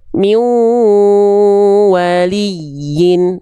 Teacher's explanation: Bunyiannya dimasukkan ke huruf wau dengan dengung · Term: idgum bigunah